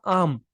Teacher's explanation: आम में आप आ पे ज्यादा बल डाल रहे हैं और म पर कम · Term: बलाघात